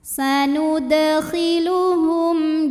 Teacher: mim sukun menghadapi huruf Jim maka mim dibaca dengan jelas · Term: izhar syafawi